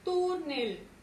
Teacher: Lleva su mayor fuerza de voz en la penúltima sílaba y termina en consonante L. Por tanto, túnel irá acentuado.